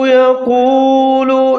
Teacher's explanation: قاف کو موٹا کر کے پڑھنا ہے، وہ ساکن وہ مدہ، کیونکہ اس سے پہلے جو قاف ہے اس کے اوپر پیش ہے تو اس کو تھوڑا سا کھینچ کے پڑھیں گے